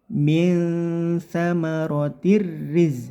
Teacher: tanwin bertemu ro ini namanya idgham bila gunah langsung dimasukkan ke huruf ro tanpa dengung